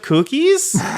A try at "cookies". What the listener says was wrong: Now you're saying it normally, but you were emphasizing the coo.